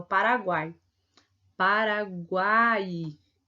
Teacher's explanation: eu vou ter uma semivogal vogal e uma semivogal · a gente percebe que o U e o I, ele tem um sonzinho mais fraco do que o A. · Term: tritongo